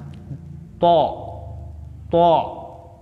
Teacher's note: To, punggung ujung lidah dan pangkal dua gigi seri atas muka bagian dalam. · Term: huruf to